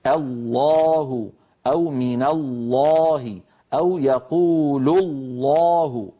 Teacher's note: العرب تفخم اللام في لفظ الجلالة كلمة الله. كل القبائل العربية بإجماع تفخم اللام من لفظ الجلالة، يعني ما في قبيلة بتقول والله، تقول والله أو تقول الله الذي، ما أحد يفعل هذا، كلهم يقولون الله الذي.